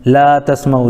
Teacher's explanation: لا تسمعوا، لا الف مدہ ہے، الف سے پہلے لام کے اوپر زبر ہونے کی وجہ سے الف مدہ ہوا، ان کو تھوڑا کھینچ کر پڑھیں گے